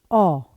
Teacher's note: जो जीभ में पीछे से बोल जाते हैं जैसे कि औ ये पीछे से बोला जा रहा है। अगर आप जीभ को पकड़ भी लेंगे आगे से तब भी आप औ बोल सकते हैं। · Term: पश्च स्वर